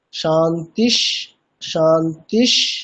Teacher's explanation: প্রথম শান্তি শব্দের যে বিসর্গ, পরে তালব্যস্য থাকার জন্য বিসর্গটি তালব্যস্য হয়ে যাচ্ছে। দ্বিতীয় শান্তি শব্দের ক্ষেত্রেও তাই। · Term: তালব্যের স